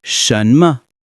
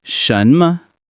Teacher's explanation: Pay attention to the tones. It's a rising tone followed by a neutral tone.